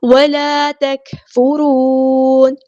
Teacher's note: کاف ساکن میں ہم اس کے صرف شو کریں گے آواز کو دھیما کر دیں گے سانس جاری رہے گی